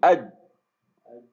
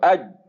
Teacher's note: اب اس کے علاوہ اگر آپ جیم کو دیکھیں، اس میں ابھی آپ نے قلقلہ والی صفت نہیں لے کے آنی ہے، آپ ویسے دیکھیں اج، روک لیں اسے جیم کو، اج، اس کے بعد آواز نہیں آ رہی. اگر آپ اس طرح سے اس کو کریں اج، تو جب وہ حروف جس موقع سے ادا ہو رہا ہے، جو اس کا مخرج ہے، اس کے اوپر جب وہ لگتا ہے اس کے آگے فردر فل بلاکیج ہے، آواز کنٹینیو نہیں ہو رہی.